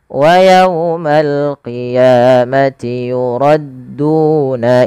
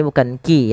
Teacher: Dia adalah huruf qof ya lebih tebal hurufnya dan dia sifatnya sifat istila. Pangkal lidahnya terangkat.